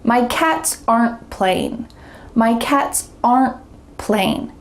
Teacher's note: There's no added schwa sound like in the first rule, but instead there's going to be a stop happening, a slight pause before saying the next word. · listen for a quick pause or stop after the contraction. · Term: stopped T